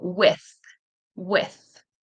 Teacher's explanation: there's no vibration in the throat. Tongue is between your teeth. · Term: th sound